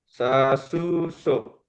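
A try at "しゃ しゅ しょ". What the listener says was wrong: Ya, kalau ejaan lama SYA, ejaan modern SHA. Sha, shu, sho. Ya, beda dengan so ini ya. Ini so, ini sho.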